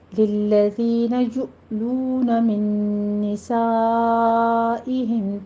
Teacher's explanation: دال کو نرمی سے پڑھتے ہوئے آگے یا مد ادا کیجیے، یؤلون میں دونوں ہونٹوں کو گول کر کے ادا کرنا ہے، حمزہ پہ جھٹکا دیتے ہوئے ، اور آگے لو میں واو مد ادا کریں گے، من